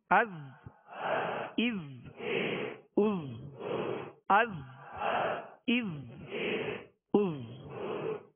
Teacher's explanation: اس میں سیٹی کی آواز ہوگی، زا کو سختی سے ادا کرنا ہے، سیٹی کی آواز ہوگی